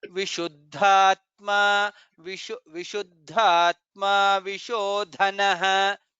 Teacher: Maybe you can put little more stress on the Mahaprana.